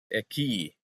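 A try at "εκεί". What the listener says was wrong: And I think you said it like eki at one point. Just make sure you get that stress on the, it's oxytone, right? Epsilon iota,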